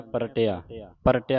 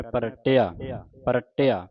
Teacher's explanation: ਇਸ ਦਾ ਉਚਾਰਨ ਹੈ ਅਧਿਕ ਲਾ ਕੇ ਉਚਾਰਨ ਕਰਨਾ ਪ੍ਰਟਿਆ ਪ੍ਰਟਿਆ ਜਿਹੜਾ ਪਾਂ ਸਬੰਧਕ ਲਾ ਕੇ ਰਾਰੇ ਉੱਤੇ ਅਧਿਕ ਲਾ ਕੇ ਪਰਟਿਆ ਇਕੱਠਾ ਹੀ ਪਾਠ ਪੜ੍ਨਾ ਪਪੇ ਨੂੰ ਵੱਖਰਾ ਨਹੀਂ ਕਰਨਾ ਇਕੱਠਾ ਹੀ ਪੜ੍ਨਾ